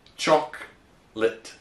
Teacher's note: Et également à rajouter une syllabe et de dire chocolate alors qu'on ne la prononce pas. We reduce it to 2 syllables and say chocolate.